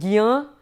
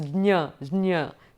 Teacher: the jnya is a combination of j plus nya. So you have to quickly go over the j and do the nya.